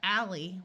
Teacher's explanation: before a vowel it has the short a sound of Al instead of the broad a sound of all